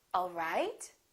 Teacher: The word right, the pitch would go up. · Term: rising intonation